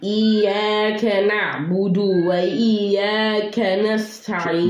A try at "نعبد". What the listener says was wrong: Don't say budu. Don't stretch the dal. نعبد, that's the word.